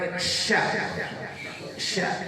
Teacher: Makhrajnya sya itu di tengah-tengah lidah. Tengah lidahnya angkat ke atas dikit. Tekan ke langit-langit.